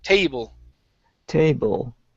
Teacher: long a sound instead of tble with a short e